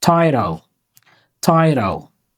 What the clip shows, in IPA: ˈtaɪroʊ